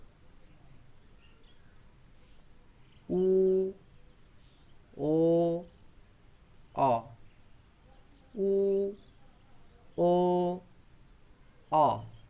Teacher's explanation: দেখো জিভটা একটু পিছিয়ে গিয়ে উচ্চারিত হচ্ছে, একটু পিছিয়ে যাচ্ছে, তারপরে এই স্বরধ্বনিগুলো উচ্চারিত হচ্ছে। তার জন্য এই স্বরধ্বনিগুলোকে পশ্চাৎ স্বরধ্বনি বলে বা পশ্চাৎ স্বর বলা হয়।